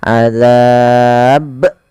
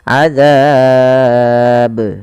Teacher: harus memiliki pantulan karena Ba punya sifat yaitu qqqya memantul maka ketika kita membaca ba yang disukunkan maka ia harus dipantulkan